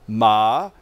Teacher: And another one is a question mark, that ma is the 3rd tone. It kind of warbles. starting high, going low, back up high again.